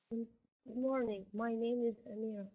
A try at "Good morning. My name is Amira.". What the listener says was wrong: the morning is a softer R. And I know in Saudi Arabia in particular, a lot of the students, they use they kind of say R.